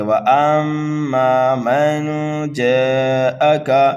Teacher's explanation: نون ساکن کے بعد جیم آ رہا ہے حروف اکفا میں سے